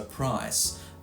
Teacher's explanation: it starts at the back of the mouth something like a and moves around to e